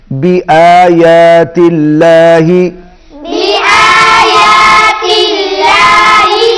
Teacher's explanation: اللہ کلام باریک ہوگا. کیوں باریک ہوگا؟ کیونکہ اس سے پہلے زیر ہے